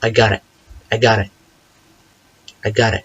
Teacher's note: a flap T because it comes between two vowels